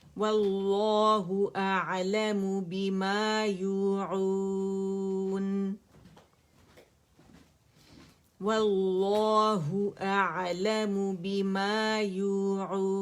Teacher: اور لفظ الجلالہ جو ہے وہ ہم موٹا پڑھیں گے، مفخم پڑھیں گے